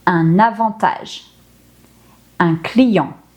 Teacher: When an N or an M follows a vowel in the same syllable, we do not pronounce the N or the M, because instead the syllable becomes a nasal sound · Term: nasal vowels